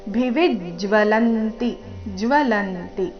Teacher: ಭಿವಿಜ್ ವಿ ಮೇಲೆ ಆಘಾತ ಇದೆ